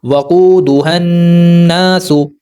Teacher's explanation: واو ساکن سے پہلے پیش ہے، واو حروف مدہ، یہاں پر پیش کو 2 حرکات کے برابر لمبا کریں گے۔